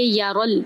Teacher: را کو پر کرتے ہوئے لام میں داخل کریں گے